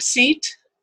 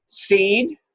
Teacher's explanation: in that word seat, the E tends to be shorter than seed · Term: fortis consonant